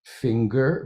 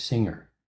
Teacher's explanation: finger with a G, which is to say a voiced velar stop. And in singer, there is no such g. It's simply a velar nasal.